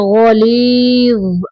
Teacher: آخر میں زبان کو تھوڑا دانتوں کے ساتھ لگا دیں گے آگے نکال کے